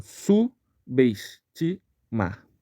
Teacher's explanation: aqui aqui também nessa palavra ocorre um erro de separação silábica o b mudo ele se une à vogal da sílaba seguinte